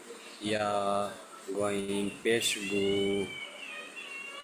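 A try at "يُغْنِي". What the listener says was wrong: টান হবে না জি, আলিফ মাদ্দা ইয়া মাদ্দা ও মাদ্দা আসলে টান হয়, এখানে গইন, গইনটি কোনো মাদ্দা নয়। ইয়া গইন পেশ ইউগু,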